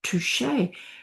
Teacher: Touch turns into touché. The OU changes to the French oo, and the CH changes into the sh.